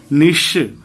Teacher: जब च छ जगह बोलते हैं वहां से आप जीभ को सटाकर बोलेंगे च निश, वहां से तालव्य स का उच्चारण होगा। मूर्धा से मूर्धन्य स का, जहां से ट ठ ड ढ बोलते हैं निश, वहां से बोलेंगे तो मूर्धन्य स, और दांत से दंत स, जहां से त थ द ध बोलते हैं तो वहां से निस।